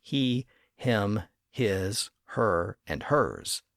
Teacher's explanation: the pronoun forms back then began with an H sound and those initial H's are still prominent in our pronouns